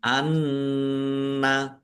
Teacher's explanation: nun tasdid dibaca runah atau mendengung ditahan. Anna ma'allahi Allahnya dibaca tebal karena harokat di depannya fathah.